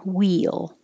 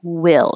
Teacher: your tongue's a little lower and there's no movement in the tongue will it's flat until i go up for the l will